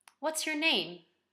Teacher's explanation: open-ended questions in English have a falling intonation. That means that the pitch goes down.